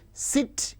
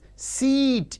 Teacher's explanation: sit in which e is short whereas seat in which e is long